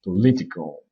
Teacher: Le O qu'on écrit dans political, on ne le prononce pas, on prononce un E